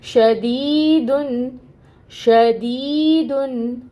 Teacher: 2 حرکت لمبا، 2 حرکت لمبا دی کو کیا شدیدن میں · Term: یا مد